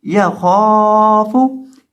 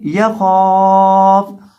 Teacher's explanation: اور اسی طرح وقف کرتے وقت فا کو ساکن کر دیں گے، یا خاف۔ اور اس لفظ کے اندر جو خا ہے اس کو موٹا کر کے پڑھا جائے گا